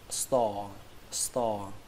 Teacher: Ở đây âm o chúng ta kéo dài nó ra